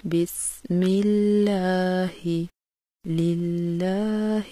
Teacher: لفظ اللہ سے پہلے اگر زیر آ جائے تو اس کے دونوں لام کی ادائیگی باریک کی جاتی ہے